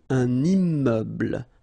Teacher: So you can see I'm making this little liaison between the two.